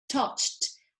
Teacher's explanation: the the sound ch um when you add an e d because it has no vibration the e d sounds like t · Yes, the past of the verb touch, que es tocar, es un verbo regular, tocar es un verbo regular, that does touch, and in the past does touched, actually ending in T, the sound, because the sound CH, when you add an ED, because it has no vibration, the ED sounds like T